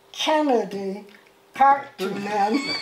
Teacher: It has three syllables. The stress is on the first one.